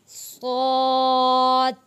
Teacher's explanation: अब ये लफ्ज़ सौत मोटा लफ्ज़ भारी पुर पढ़ा जाएगा सौत, ज़ौद। ये ज़ौद भी मोटा और पुर भारी पढ़ा जाएगा तो, ज़ो, आइन, गईन, फा।